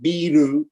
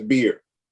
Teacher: stop putting the vowel at the end of the word